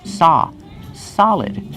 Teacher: Use the open ah sound like hot and stop.